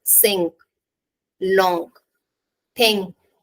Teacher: put the back of your tongue against the roof of your mouth and let the air pass through your nose